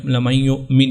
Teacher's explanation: نون کے اوپر پیش ہے تو اس کو بھی ساکن کر دیں گے، لَمَن یُؤْمِن ہو جائے گا۔